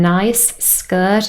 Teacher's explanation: nice ends in a fricative sound unvoiced and skirt starts with exactly the same sound but if set together there's only one of them now let's